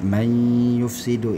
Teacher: Man yufsidu ini adalah idgham bi gunnah. Ketika nun sukun bertemu dengan ya, maka dia diidghamkan.